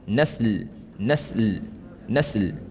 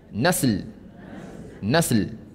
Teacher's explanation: Kita gerakkan lidah kita sehingga hujung lidah atas bersentuhan umbi gigi atas untuk makhraj lam.